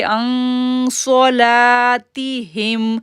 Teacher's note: صاد کو موٹا پڑھیں گے، لام کو الف سے پہلے زبر ہے، 2 سیکنڈ کے لیے کھینچیں گے